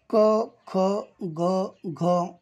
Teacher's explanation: या वर्णांच उच्चार स्थान कंठ आहे